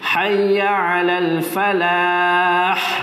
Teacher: Ada desiran angin. Desiran nafas ada.